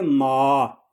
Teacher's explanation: مال کی میم کو ادا کرتے وقت ناک میں آواز نہیں جاتی